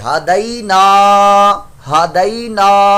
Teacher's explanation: یہ الف مدہ ہے, اس کو ایک الف دو حرکات کے برابر ہم لمبا بھی کریں گے